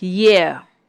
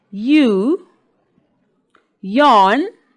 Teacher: when you say ye, your lips are spread, okay? Especially when you say a word like yeah. But when you say a word like you, yawn, your lips are rounded